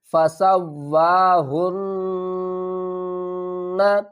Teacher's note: ہا کو نون سے ملائیں گے، نون کے اوپر گنہ بھی کریں گے اور ہا کو ہم بھاری آواز کے ساتھ ادا کریں گے۔